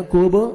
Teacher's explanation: काफ को बारीक पढ़ेंगे और बा हरूफ क़लक़ला में से है, डबल साउंड आएगा